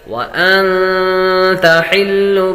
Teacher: نون ساکن کے بعد تا حروف اخفاء میں سے آ رہی ہے تو غنہ کر کے پڑھیں گے.